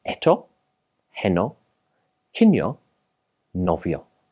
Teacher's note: the pronunciation of the vowel o, which is usually a very roundly but shortly pronounced sound